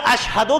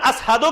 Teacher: بلال کا لہجہ عربی نہیں تھا، لہذا اشہدو کی جگہ اسہدو کہتے تھے، شین کو سین کہتے ہیں